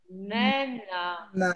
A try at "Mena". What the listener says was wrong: Ça, c'est pas mais. On écrit ici la mais. Respectez les tons.